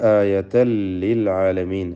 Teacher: എന്നിട്ട് ചേർത്തോതുക ആയതൻ ലിൽ ആലമീൻ. ആയതൻ എന്ന തൻവീനിനെ ഇദ്ഗാം ബിഗൈരി ഗുന്ന അല്ലെങ്കിൽ ഇദ്ഗാം ബിലാ ഗുന്ന നൽകി ലാമിലേക്ക് പൂർണ്ണമായും ലയിപ്പിച്ച് മണിക്കാതെ ഉച്ചരിക്കുക.